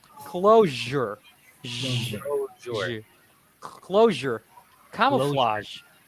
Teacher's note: sometimes people pronounce the sound as the J J so yeah so it's actually zh so there's a little bit more air there